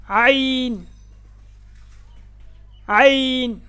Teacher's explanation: عین حلق کے درمیان والے حصہ سے ادا ہوتا ہے. گلے کے درمیان جب دباؤ ڈالیں گے تو یہ حرف ادا ہوتا ہے.